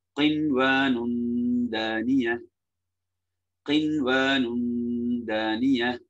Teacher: தன்வீனுக்கு பிறகு தால், மறைத்து ஓதுதல், இஹ்ஃபாவும் குன்னாவும்